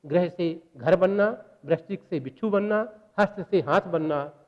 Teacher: महाप्राणीकरण के तहत क्या होता है कि महाप्राण स्वन दूसरा और चौथा है। एक पहला, तीसरा और पांचवा स्वन यदि दूसरे और चौथे में परिवर्तित हो जाए तो महाप्राणीकरण होता है, जिसे अंग्रेजी में एस्पाइरेशन कहते हैं।